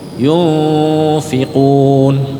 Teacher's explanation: Yufi, bibir bawah ketemu gigi atas. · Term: ikhfa hakiki